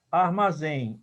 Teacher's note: Então, eu tenho aqui, ó, armazém, eu tenho uma vogal, eu tenho outra vogal, e eu tenho aqui um ditongo, tá? Que é o E, e o M representando o fonema I, nasal